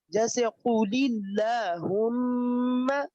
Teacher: یہ لفظ اللہ ہی ہے، لیکن اس سے پہلے زیر ہے لہذا اسے باریک پڑھیں گے